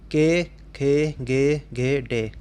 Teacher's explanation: के, खे, गे, घे, डे कंठ से उच्चारित वर्ण